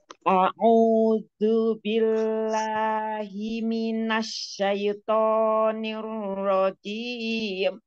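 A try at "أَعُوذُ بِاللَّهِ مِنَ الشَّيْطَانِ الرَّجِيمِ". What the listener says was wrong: Minasyaiton itu jangan terlalu cepat. Jangan terlalu minasyaiton, jangan terlalu cepat.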